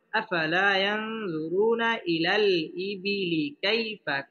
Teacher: পেশের বাম পাশে জাজমুল্লাহ ওয়াও, মদের হরফ এক আলিফ টেনে পড়তে হবে এবং রটা পুর মোটা করে পড়তে হবে।